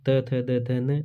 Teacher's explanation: इसका जो हमारा जीभ का जो स्पर्श होता है वो दांतों से होता है, इसलिए इसको दंत्य वर्ण कहा जाता है।